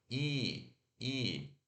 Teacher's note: o som do I do português é a ponta da língua, front, e close. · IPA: /i/